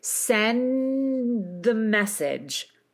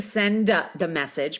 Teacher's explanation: And you're going to move right into the D, but this time, because we're going into a consonant, you don't explode the D quite as much. Okay, so you sustain the D, you sustain the N, sustain the D, and then keep your voice going as you move into the next sound.